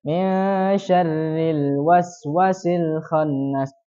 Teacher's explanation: menghilangkan alif min syarril waswasil khannas. Jadi wnya tidak dibaca panjang, dia hilangkan. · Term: penghilangan